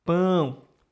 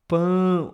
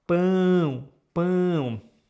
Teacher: No português temos esses sons nasais que são únicos, que o som precisa passar pelo seu nariz quando você pronuncia.